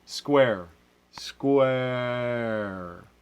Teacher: maybe you can hear a hint of a in there the trap vowel or the bath vowel